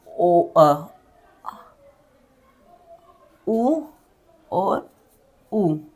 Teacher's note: ओ जो शब्द है वो हम बोल रहे तो हमारी जीभ की पीछे का हिस्सा टच हो रहा है।